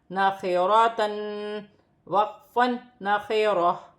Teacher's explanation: وقف کی صورت میں دو زبر کی تنوین گر جائے گی اور تا ہا میں بدل جائے گی